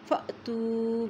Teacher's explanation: اب دیکھیں الف کے اوپر جزم آ گئی ہے تو وہاں پہ ہم کیا کریں گے؟ جھٹکا دے کے پڑھیں گے